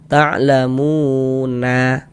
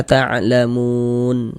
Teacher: Untuk di sini huruf nun itu enggak dibaca panjang. Karena berhenti di huruf yang tidak dibaca panjang, hurufnya kita sukunkan, kita matikan sehingga kita baca ta'lamun.